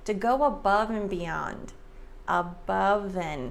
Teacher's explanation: So the V sound links to the A